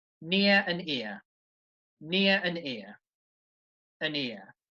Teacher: there is no gap between them they are linked together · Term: linking